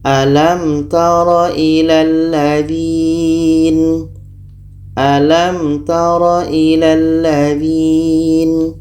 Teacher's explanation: mim dan ba maka ini dibaca jelas Apa yang dibaca jelas mim jelas ta jelas dan tidak boleh dengung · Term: Izhar Syafawi, izhar syafawi